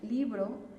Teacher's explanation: si yo me voy a la primer sílaba que es libro es donde colgamos más la voz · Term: sílaba tónica